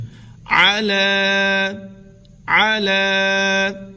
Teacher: لمن المرسلین، علی صراط مستقیم۔ عین کی آواز نمایاں کریں گے، حلق کے درمیان والے حصے سے عین ادا ہوگا